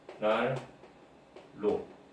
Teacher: 리을과 니은이 만났을 때 리을과 리을로 발음된다